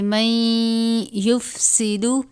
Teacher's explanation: نون ساکن ہے، اس کے بعد حرف یرملون میں سے یا آیا ہے تو ہم نون کو یا سے ملا دیں گے اور غنہ کریں گے